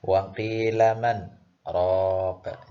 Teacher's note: Jadi setelah mengatakan waqilaman, Anda berhenti sejenak, tapi tidak boleh mengambil nafas. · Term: Waqaf saktah